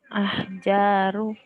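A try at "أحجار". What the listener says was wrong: Kok jadi berubah hurufnya, urutannya? terbalik titiknya, titiknya ketukar. Kalau hajarun, ahjar.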